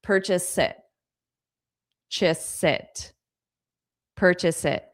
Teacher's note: The it sounds like sit because I'm taking this S from purchase and I'm connecting it on to the next sound